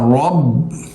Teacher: रॉ को बा से मिलाएंगे और रॉ को मोटा करेंगे और बा को लाम से मिलाएंगे, ये दरमियान वाला अलिफ नहीं पढ़ेंगे, इस पर कुछ भी नहीं।